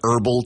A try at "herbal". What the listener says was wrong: but there's no h sound in the spice the seasoning